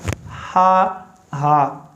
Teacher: तो बाज़ लोग इस पर जो है ना बहुत ज़्यादा फोर्स लगा के, जैसे ये मैदे से अदा हो रहा है, मैदे से इसको ज़ोर लगा के अदा नहीं करना। ठीक है, ये हलक के नीचे वाले हिस्से से अदा होता है सिंपल तरीके से।